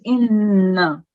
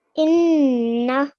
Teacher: So it's not inna, it's inna. So you have to hold the nun sakin sound for 2 seconds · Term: shadda